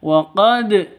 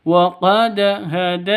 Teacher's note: qalqalah sugro dipantulkan ke dalnya